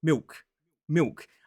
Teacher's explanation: speakers of estuary English, some of them will pronounce the dark L as a W sound